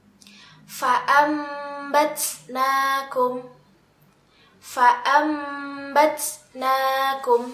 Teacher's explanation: apabila kita menemukan sukun atau tanwin bertemu dengan huruf ba maka nun sukun atau tanwin ini ditukar atau diganti dengan huruf mim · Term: iqlab